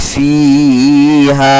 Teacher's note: الف سے پہلے ہا کے اوپر زبر ہے، الف مدہ ہوگا، اس کو بھی تھوڑا سا کھینچ کر کے پڑھیں گے